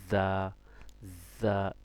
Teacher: তারপর দেখতে পাচ্ছেন কি, দেখেন এটা হচ্ছে যা, যাটা কি হবে, শক্ত হবে। আপনার জিহ্বার আগাটা সামনের দাঁতের আগার সাথে লাগবে, যা, যা, মানে যা, শক্ত করে কি ধাক্কা দিতে হবে, শক্ত করে ধাক্কা দিতে হবে।